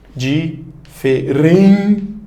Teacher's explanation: O N no final de sílaba só nasaliza. Então você já subtrai ali um fonema.